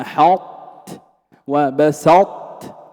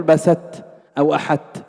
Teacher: بين الإطباق في إدغام الطاء في التاء في هذه الكلمات